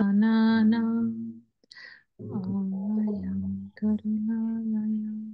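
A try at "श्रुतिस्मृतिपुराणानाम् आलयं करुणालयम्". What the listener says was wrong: It is sounding like a funeral. And then secondly, there is no tea break between Smriti and Puranana.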